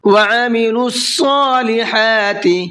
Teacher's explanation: عین کو حلق سے نکالیں گے اور صاد کو پر کر کے پڑھیں گے